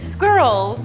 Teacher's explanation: you're more rounded. You like blend it so that it sounds like swirl. It's like almost swirl.